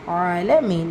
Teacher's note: ஐன்ல அலிஃப் சகிரா இருக்கு இரண்டு ஹரக்கத் அளவு நீட்டம் கொடுத்து ஓதுங்க